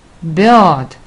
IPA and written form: bə:d (bird)